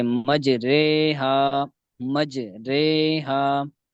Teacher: را ممالہ زیر اور یا کی طرف مائل ہونے کی وجہ سے باریک پڑی جاتی ہے